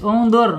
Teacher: Karena ro sukunnya sebelumnya harokat dhamma ya. Ditebalkan, ditarik lidahnya ke belakang. Setelah bergetar tarik ya. Jadi getarannya tidak boleh lebih dari 2 ya. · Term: ro-nya tebal